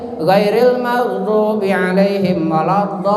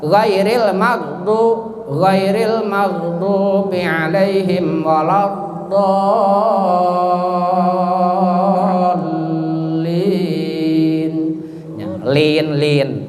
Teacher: Tapi kalau baca begini, ghairil maghdubi alaihim waladdallin, itu udah membuang satu huruf. Jadi harus ditahan dulu lamnya. Karena di situ ada syidah.